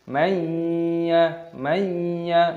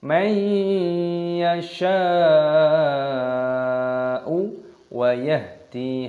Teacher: Mayya, mayya, nun sukun bertemu dengan ya, idgham bi gunnah, didengungkan, dimasukkan dan didengungkan. Dan di sini ada mad wajib mutasil, panjangkan 6 ketukan.